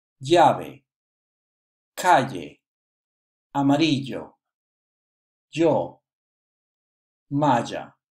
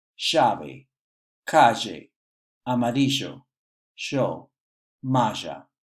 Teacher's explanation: In some countries like Argentina or Uruguay, you might hear a different pronunciation, more like a sh sound.